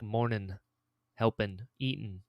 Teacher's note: Where I'm from, we don't put G's on the end of our words.